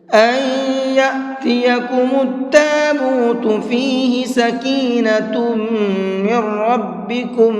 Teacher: سکینۃ، یہاں پر غنہ کریں گے، اس لیے کہ یہاں پر تنوین کے بعد میں میم ہے، اور تنوین کے بعد میں میم آتا ہے تو وہاں پر بھی غنہ کر کے پڑھتے ہیں۔ من ربکم، میم کو ڈائریکٹ را میں ملا کر کے پڑھیں گے، اور یہ نون نہیں پڑھا جائے گا، اور را کو پر کر کے بھی پڑھیں گے۔